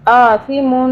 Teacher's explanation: ثا ہے اس کو سافٹلی ادا کرنا ہے، سین کی آواز میں نہیں پڑھنا